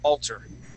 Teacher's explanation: So on that word alter, okay, we wouldn't say altar, okay, giving that another sound. We would just cut right to an ER sound and say alter.